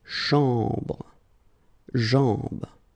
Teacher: basically you just hear this nasal sound, as we say, you know, this A-N sound